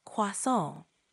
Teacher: Try emphasizing the nasal sound at the end a bit more